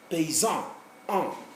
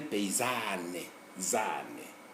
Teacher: When it is masculine, it's nasal. When it becomes feminine, it becomes oral.